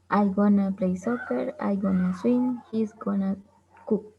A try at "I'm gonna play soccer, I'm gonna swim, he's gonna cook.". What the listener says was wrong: The last one, faster. No, the last one, la última.